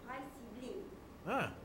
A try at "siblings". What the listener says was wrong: Siblings ada S.